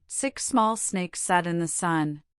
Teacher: For the crisp S sound, the tip of your tongue should hover very close to the alveolar ridge, that same area behind your upper teeth we used for the L sound. A thin, focused stream of air is directed over the center of the tongue, creating a sharp, clear, and hissing noise.